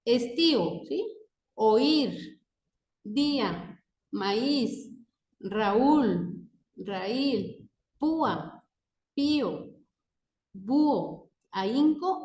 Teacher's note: solo golpe de voz en el hiato están encontramos que si Están juntas las vocales pero forman parte de sílabas diferentes se pronuncian en distintos en distintas sílabas Sí entonces por ejemplo